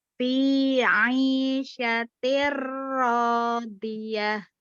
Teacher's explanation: Dibacanya dengan melebur ke huruf ro-nya tanpa gunnah.